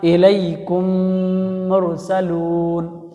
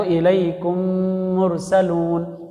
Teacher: میم کے بعد میم آئے تو بھی غنہ کرنا چاہیے۔ بہت آسان طریقہ، الیکم مرسلون، تو میم ساکن کے بعد میم آیا ہے اور میم پر تشدید آیا ہے، میم کے بعد میم آیا ہے تو الیکم مرسلون۔